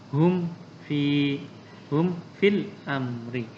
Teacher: Mim mati bertemu dengan fa. Hum fil amri. Dibaca izhar atau jelas. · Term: izhar syafawi